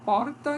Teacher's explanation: a minha língua não chega a tocar pode até tocar mas ela se volta para trás então tem porta e tem a língua se volta para trás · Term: retroflexa